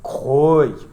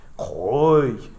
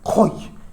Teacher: And koi is bare. And so by the laryngalization or the rising and falling of the tone, you have completely different lexical items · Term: monosyllabic tones